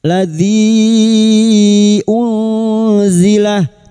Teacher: bertemunya mad dengan hamzah di lain kalimat mad jaiz munfasil lima harakat kita panjangkan